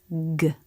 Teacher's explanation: G is voiced, meaning you make a sound with the vocal cords